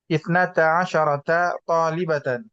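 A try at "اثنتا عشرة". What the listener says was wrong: Shinnya perhatikan, jangan salah lagi. Shinnya, nah, sukun mati ash, asyrata. Kalau 12 muzakkar, baru fathah.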